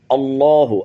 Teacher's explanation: آگے اللہ کی لام کو پر کریں گے